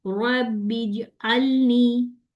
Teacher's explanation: मैं जीम को मिला रही हूँ, वहां पे रोक रही हूँ, रबिज अलनी। अब जीम में वो चा की साउंड नहीं आई ना